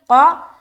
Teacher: قاف کو موٹا کر کے ادا کرنا ہے کیونکہ یہ حروف مستعلیہ میں سے ایک ہے، لہٰذا اس کے اندر استعلاء کی صفت پائی جاتی ہے، اور جس حرف کے اندر استعلاء کی صفت پائی جائے اسے ہمیں موٹا کر کے ادا کرنا ہوتا ہے.